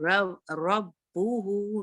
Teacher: make sure बा की शद्द आवाजें रखें, बा टू टाइम्स ही अदा हो